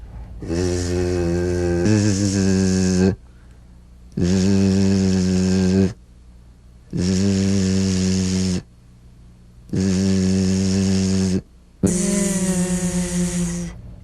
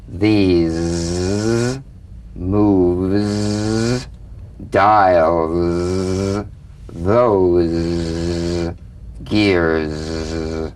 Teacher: feel a smooth, strong vibration in the teeth and in the front of the tongue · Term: Z sound